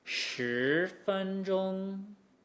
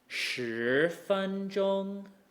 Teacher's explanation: When we have a second tone going into a first tone, the second tone resolves, that pitch rise, resolves right where the first tone starts, which means it's a really natural production.